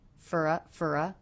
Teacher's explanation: reduced the vowel in the word for to the schwa